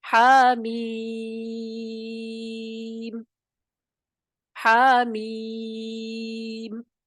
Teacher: اس پہ مد لازم حرفی مخفف کا قاعدہ لگ جائے گا، اور اس کی مقدار کتنی ہے؟ 6 حرکت. تو ہم کیسے پڑھیں گے؟